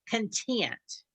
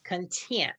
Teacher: put the accent on the last syllable